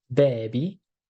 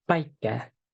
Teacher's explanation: the difference here is whether or not you're using your voice or you're not using your voice